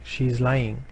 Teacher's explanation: if you're saying she's lying, then your F0 will decrease as you come to the end of the sentence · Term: fall pattern of F0